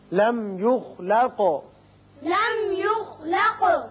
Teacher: میم پر اظہار ہوگا، خا پر پڑھیں گے، قاف پر قلقلہ